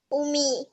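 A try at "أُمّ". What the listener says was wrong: Ya, ummu atau ummi tapi nggak pakai iya ya. Ummu. Ummu, alif dan mim.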